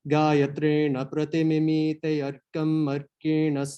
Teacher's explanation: So after the prati, the pra is marked for a high note, right? This high tone, but the ti after it will get like an even higher called the smarita